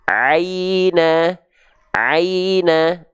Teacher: Nah jadi jangan sampai berbunyi E tapi pastikan dia berbunyi I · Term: Lin